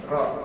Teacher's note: ro itu ketika dibaca udara miring ke belakang lidah sedangkan lam udara miring ke permukaan lidah sebab lam itu dari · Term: inhiraf